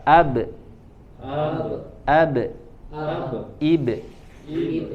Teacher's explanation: kalau huruf ba dia punya sifat khusus juga, namanya qalqalah ya mantul